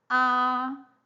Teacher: the tone Mark is it's a Short Line okay high level so that's the first tone high level high level tone